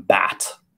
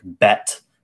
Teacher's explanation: the vowel in bat is more open, and the vowel in bet is the tongue is slightly closer to the roof of the mouth.